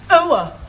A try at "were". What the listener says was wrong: Almost. Try again, but this time, don't say ower, just were.